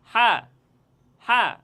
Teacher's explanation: হরফটি উচ্চারণের স্থান হচ্ছে হলকের মধ্যখান থেকে তথা গলার মধ্যখান থেকে এই হাফটি উচ্চারণ হবে